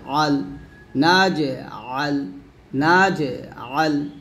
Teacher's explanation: এই আইনটা চাপ দিতে হবে, গলার মাঝখান থেকে চাপ দিয়ে বলতে হবে